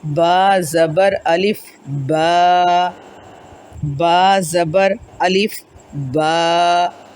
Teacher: الف خالی ہو، اس سے پہلے زبر ہو، تو اس کو ہم پڑھیں گے با زبر الف با، با زبر الف با، 2 حرکات کے برابر اس کو لمبا کریں گے